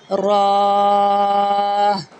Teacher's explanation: را کو پر پڑھا جائے گا، زبان کی نوک اور مقابل کے تالو سے ادا ہوگا